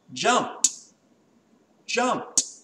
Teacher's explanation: Now, when I talk about jumping in the past, I don't say jump, I say jumped, jumped. And the ED makes a T sound.